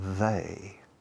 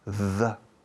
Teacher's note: La lengua sale de la boca, they. Se coloca, se descansa sobre el inicio de los dientes frontales superiores y luego the. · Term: TH vibrada